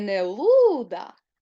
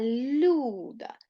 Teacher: цей склад я чітко чую лише звук у але при цьому Я бачу що літера ю робить приголосний м'якеньким